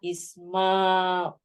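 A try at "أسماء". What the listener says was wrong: Asma. Not Isma. Asma.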